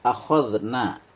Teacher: dibaca panjang Karena fathah bertemu Alif disebut Mad Thobi'i